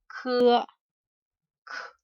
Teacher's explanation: just like the key, but it is strongly aspirated